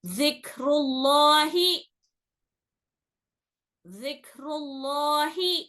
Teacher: لام جو اللہ کے لفظ میں ہے اس کو موٹا پڑھنا رہتا, ابھی زبان کی جڑ کو ہلکی سی اٹھانا رہتا اوپر تالو کی طرف. ذکر اللہ, ذکر اللہ, ایسا پڑھنا ہے اس کو. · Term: لام اس میں جلالہ